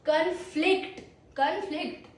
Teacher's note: The stress on second syllable.